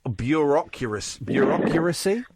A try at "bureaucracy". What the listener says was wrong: Yeah, there's an extra U in there, but it's fine.